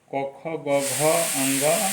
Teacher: इनका उच्चारण स्थान है कंठ